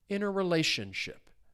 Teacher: the stress is on that fourth syllable, interrelationship.